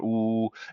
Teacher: your tongue is kind of bunched up in the back of your mouth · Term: ooh sound